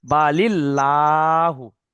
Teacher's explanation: আল্লাহ শব্দের আগের অক্ষরে যদি জের হয় তখন আল্লাহটা বারিক হবে, মানে লা বলতে হবে।